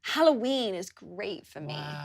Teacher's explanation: uses a long /iː/ sound in the word 'halloween'